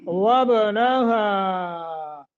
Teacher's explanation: با پہ قلقلہ اور ہا کو زیادہ لمبا کریں گے، کیوں؟ اس لیے کہ مد منفصل آ گئی ہے۔